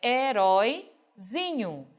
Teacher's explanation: Zi passou a ser a nossa sílaba tônica, é a sílaba mais forte dessa palavra.